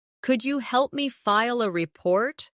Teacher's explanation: Could you becomes could ya in natural speech